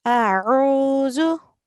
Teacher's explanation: we do not prolong the alif because it carries a fatha